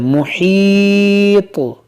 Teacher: जब रुकेंगे तो इस तो को साकिन करेंगे, जब साकिन करेंगे तो ये यहाँ पर कलकला होगा